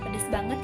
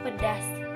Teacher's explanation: karena perubahan pengucapan fonem, yaitu fonem A diucapkan menjadi fonem E